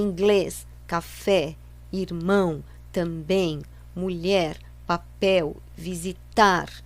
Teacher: todas essas palavras têm a última sílaba forte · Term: oxítonas